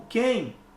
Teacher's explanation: eu tenho um ditongo decrescente nasal